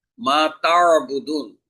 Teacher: আইনের উচ্চারণ গলা চিপে আদায় করতে হবে